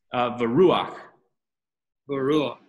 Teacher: So it ends up being because it's a shurik, it ends up being a oo sound